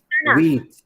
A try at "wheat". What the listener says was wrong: The pronunciation is wheat. It's not wet. It is not wet. It is wheat.